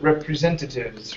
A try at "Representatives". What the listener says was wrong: give me an S at the very end